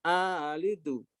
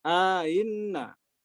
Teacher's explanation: Jadi ada alif antara hamzah yang pertama dengan hamzah yang ditashil. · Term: tashil hamzah kedua disertai idghal